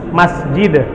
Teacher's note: memiliki sifat ketika waqaf dia harus di Qalqalah kan